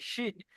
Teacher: শিনের মাখরাজ আপনারা পড়েছেন, জিভের মাঝখানটা উপরে তালুর সাথে লাগিয়ে, জিভের মাঝখানটা উপরে তালুর সাথে লাগিয়ে শিন উচ্চারণ হয় মোটা করে